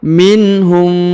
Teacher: huruf mim sukun bertemu dengan huruf mim ya atau mim bertemu m maka ditahan dan ditekan didengungkan dua harakat